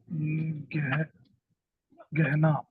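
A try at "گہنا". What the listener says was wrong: गहना नहीं, गहना अगर इस्तेमाल करें तो ये हा हो गया। घना, हाँ घना जंगल बोलती है ना। घना जंगल, घनी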